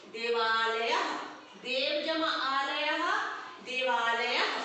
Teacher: जैसे देव जमा आलय, देव में देखेंगे अ है लेकिन छोटा है, ह्रस्व अ है, लेकिन आलय में आ बड़ा है, तो अ जमा आ बन गया आ। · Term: दीर्घ संधि